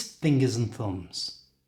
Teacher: to say this naturally in fast English change the and to just an n Sound